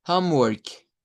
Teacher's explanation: la palabra work. lleva acento, es una sílaba tónica, suena con fuerza de voz.